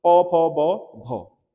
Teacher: भ ज्यादा आपका श्वास लगेगी, घोष भी है, ठीक है, सघोष वर्ण भी है, और स्पर्शी भी है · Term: महाप्राण